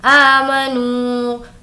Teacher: नू को भी खींचेंगे क्योंकि वाव मद्दा